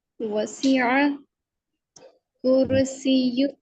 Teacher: र मोटा होगा क्योंकि र से पहले पेश है